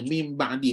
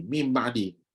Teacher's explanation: Nun jumpa ba maka kena tukar Nun tu jadi mim Dah Bila tukar jadi mim sifat mim lah yang tak boleh buka bibir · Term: hukum iklab